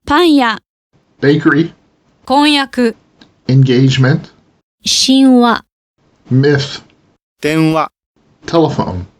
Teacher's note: Before vowels Y and W, the syllabic nasal takes on some of the color of the following sound.